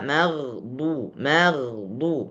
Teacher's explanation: campur Huruf tebal dan huruf tipis misalnya kita membaca magdu magdu maka huruf mim tipis dan huruf ghin tebal